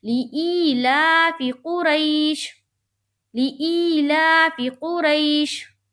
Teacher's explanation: یائلین کو ہم نرم آواز کے ساتھ جلد پڑھتے ہیں اور معروف پڑھتے ہیں